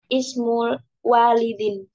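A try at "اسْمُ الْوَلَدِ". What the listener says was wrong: Ismul waladi, bukan walid. Kalau walid itu di depan wau ada alifnya. Ismul waladi.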